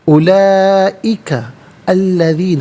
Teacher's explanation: مَكَانًا عَلِيًّا، اولئک الذین، اولئک میں لام پر کھڑا زبر، اوپر مد کی علامت، مد متصل ہے، مد واجب بھی کہتے ہیں، لازم بھی کہتے ہیں۔ منیمم اس کو 3 سے 4 حرکات کی مقدار کھینچ کر پڑھنا لازمی ہے، میگزیمم اس کو 5 سے 6 حرکات کی مقدار کھینچ کر پڑھ سکتے ہیں۔